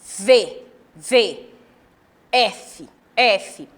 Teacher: f as duas letras elas representam o mesmo modo de articulação eu coloco meu dente superior sobre o meu lábio inferior e sopro